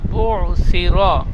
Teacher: বুসিরা বলে র টান হয়ে গিয়েছে, র হারাকাত, টান হবে না।